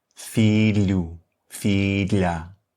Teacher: a ponta da tua língua, toca no céu da boca e as partes laterais da tua língua estão um pouco abertas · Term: som de LH